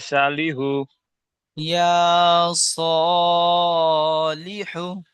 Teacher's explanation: জি, ইয়ার উপরে খারা জাবার এসেছে, এটি হলো খারা জাবারটি হলো আলিফ মাদ্দার সমতুল্য, তাই খারা জাবারকে এক আলিফ পরিমাণ টান দিয়ে পড়তে হবে। সদের উপরে খারা জাবার এসেছে, তাই খারা জাবারটি হলো আরিফ মাদ্দার সমান, তাই খারা জাবারকে একালি পরিমাণ টান দিয়ে পড়তে হয়।